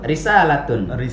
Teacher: Ri-nya kan kasroh. Iya. Ri senyum dia. Ri tipis. Enggak boleh ri. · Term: tarkik